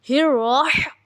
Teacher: زبان کی جو پشت ہے سامنے مقابل تالو سے لگا تو را ادا ہو جائے گا۔